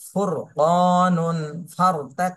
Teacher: র সাকিন ডানে জবর অথবা পেশ হলে র মোটা করে পড়তে হবে